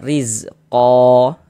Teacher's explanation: Terjadi mad iwad panjangnya 2 harokat.